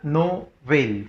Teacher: Novel, fuerza de voz en la vel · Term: aguda